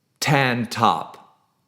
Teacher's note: tan is more forward than top